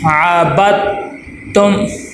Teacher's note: جوڑ نکالنے کا طریقہ یہ ہے، عین زبر ع، با، دال، تا، زبر، بت، تا، میم، پیش، تم، عابدتم، عابدتم نہیں ہے، عابدتم، با کو تا کے ساتھ ملا دیں گے۔ دال لکھنے میں آتا ہے لیکن پڑھنے میں نہیں آتا۔